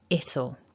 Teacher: there's stress there on that first syllable of the contraction